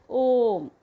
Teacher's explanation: ओ को 3 मात्राओं के बराबर इसे खींचा जाता है। आप यहाँ देख सकते हैं ओ के बगल में 3 लिखा हुआ है, यानी कि 3 मात्राओं तक का समय यहाँ पर लगेगा ओ को सिर्फ उच्चारित करने में। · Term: प्लुत स्वर